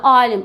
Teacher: alim a uzanır. Amma vurğunu harda deyirik biz? Vurğunun sonunda deyirik. A-nı isə uzatmış oluruq. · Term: uzanma